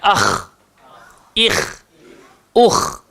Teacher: So kha keluar dekat atas tekak.